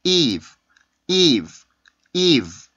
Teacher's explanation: 그 유성음이라는 거에서 성대 울림이 빠지기 때문에 공기가 굉장히 약해집니다